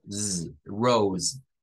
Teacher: nótese que la S es vibrante en este caso